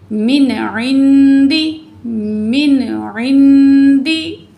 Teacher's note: तो यहाँ हम मिन नहीं पढ़ेंगे क्योंकि हरूफ हल्की में से आइन आ रहा है, ठीक है। तो हम सिर्फ यहाँ नून की आवाज़ को ज़ाहिर करके पढ़ेंगे